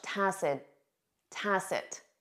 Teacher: You won't hear that final T in spoken English